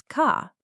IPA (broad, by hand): kɑː